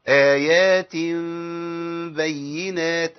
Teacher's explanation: بخفي الميم، ما بظهرش الميم